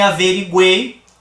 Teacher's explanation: acertada de se dizer porque não são na verdade três vogais o u e o I em Paraguai não estão exercendo a função de vogal eles têm uma intensidade menor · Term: semivogais